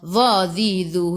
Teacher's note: Hujung lidah keluar sikit sahaja pada gigi depan.